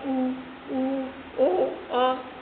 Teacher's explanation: जिसके उच्चारण में वृत्त बने। अब जो आप उच्चारित करते हैं उनके उच्चारण में आपके जो होठ है वह गोल आकृति के बने तो उनको क्या कहते हैं हम वित्त मुखी जैसे कि आपने उच्चारित किया उ ओ औ तो ये कैसे हो जाते हैं आपके वित्त मुखी स्वर हो जाते हैं।